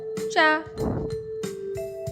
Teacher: आ की मात्रा का उच्चारण स्थान गले से होता है। व्यंजन के साथ जब आ की मात्रा लगती है तब उस व्यंजन की ध्वनि स्पष्ट होती है।